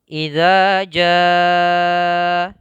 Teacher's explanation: Nah, ini kita namakan dengan di sini lafalnya mad wajib ya, mad wajib muttasil ya. Membacanya mad wajib muttasil itu 4 harakat.